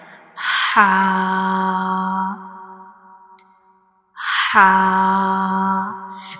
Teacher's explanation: Ha is pronounced from the middle part of the throat, like ha. Ha.